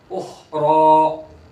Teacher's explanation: खा भी पूर और रा भी पूर, दोनों पूर और होंठ गोल नहीं होंगे